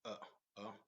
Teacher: the Hamza functions as a consonant, as I said, is not as a long vowel, and also is produced from the back of the throat